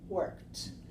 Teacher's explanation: The last sound is k, k, and the last sound k is not voiced. It's unvoiced or voiceless. So this one sounds like t, worked.